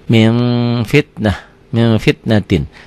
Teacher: Min fitnatin, dibacanya jadi min bunyi m, tapi min bibirnya kebuka sedikit, bindeng tetap. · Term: ikhfa